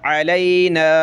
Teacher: اس نون پہ غنہ کرنا ہے، اس کو کھینچنا ہے اور یہاں ناک میں آواز پیدا کرنی ہے